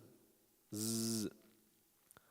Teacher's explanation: Za is kind of like a buzzing sound, but they'll still call it Safir.